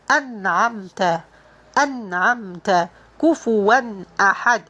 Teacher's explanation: the noon is going to be clear, and there is no need to apply full gunna. It is only the gunna needed to produce the letter. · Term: izhar